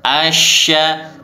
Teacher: huruf sya, lidah bagian tengah naik ke langit-langit